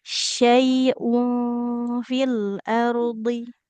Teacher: dalam pengucapan huruf hamzahnya jangan seperti ain ya